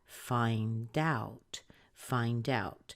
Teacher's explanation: answer to something so we know it's a phrasal verb and when you have the verb plus this what looks like a preposition you're going to stress the second word a lot more